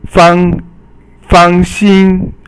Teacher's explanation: fang is fourth tone and xin is first tone